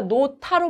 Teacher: 우리가 노타로 발음하죠. 히읗하고 디귿이 만나서 티읕으로 발음이 되고 있고요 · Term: 거센 소리 되기